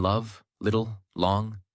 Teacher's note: The tip must touch the upper teeth ridge gently. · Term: L sound